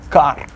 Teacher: Unlike English, where you would have to say ka and breathe out, for example, a car. In Russian, you don't do that. The car with a Russian accent would be kar.